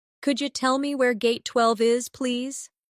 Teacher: In natural speech, could you sounds like could ya.